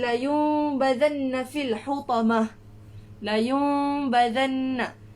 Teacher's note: Dia dengung, tapi bila kita nak sebut huruf ba tu kita tak sampai bibir tu tak sampai pun. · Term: iqlab